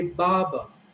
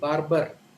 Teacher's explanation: speaker when they pronounce this word they would say baba so the r in the first syllable and the r in the second syllable both are silent